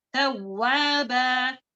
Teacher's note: فی کیا ہے یہاں پر با جو ہے مد عوض ہے فتحتان کے ساتھ ہے ایک فتح کو ہم ہٹا دیں گے وقت کی حالت میں ایک فتح کو رکھیں گے